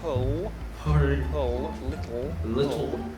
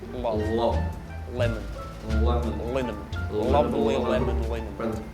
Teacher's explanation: We're going to have a really dark L right at the back.